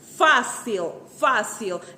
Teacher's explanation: Se você pronunciar a palavra em voz alta, perceberá que Fá é a sílaba tônica